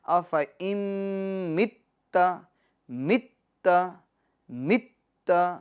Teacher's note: تا مشدد ہے تو اس کو ٹھہراؤ کے ساتھ جماؤ کے ساتھ ہم پڑھیں گے، یعنی مشدد حرف کو 2 مرتبہ پڑھا جاتا ہے نا، تو ہم اس کو تھوڑا ٹھہراؤ کے ساتھ جماؤ کے ساتھ پڑھیں گے، یعنی اس طرح افإن مت مت مت، ٹھیک ہے، افإن مت، ٹھیک ہے.